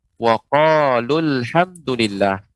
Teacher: seolah hurufnya tidak ada seolah hurufnya tidak ada jadi pengucapannya whoqol-old dari lam yang berharakat dhammah langsung dimasukkan ke alif lam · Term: washol, wasal